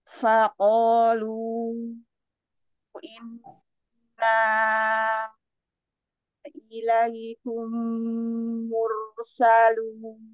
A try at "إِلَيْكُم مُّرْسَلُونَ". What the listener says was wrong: Waktu kita menahan gunnah pada mim, jangan gini. Ilaikum. Jadi tarik dulu, nanti kita gomah lagi. Ilaikum mursalun.